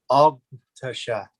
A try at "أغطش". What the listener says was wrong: Yeah, the ta is heavy ta, not ta, but ta.